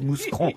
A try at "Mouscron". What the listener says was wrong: Moucron, on dit Moucron, on ne prononce pas le S. On dit Moucron.